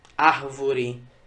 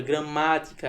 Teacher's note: no caso da proparoxítona a sílaba tônica não é a última também não é a penúltima é a antepenúltima